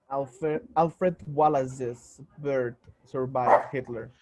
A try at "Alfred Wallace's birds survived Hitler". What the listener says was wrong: Good, except don't make the Wallace into a Z. Don't say Wallace's. No, it's not two Z's. It's a Wallace's. The first is an S, Wallace. That last is a Z. Wallace says. Wallace says birds.